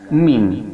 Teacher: mim, makharijul hurufnya berada pada kedua bibir yang disentuhkan.